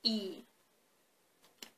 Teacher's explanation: the front part of your tongue is slightly raised towards the hard palate. And that's why we have this classification, front vowels.